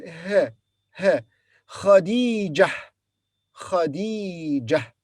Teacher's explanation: Kha has fatha, so we say Kha, followed by Dal with kasra D, then Ya, Khadi, then Jim, Ja, and then Ta marbuta, and we pause here, so we say it's pronounced as H